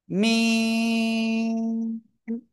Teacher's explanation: দুই ঠোঁটের শুকনো জায়গা থেকে অক্ষরটা উচ্চারিত হয়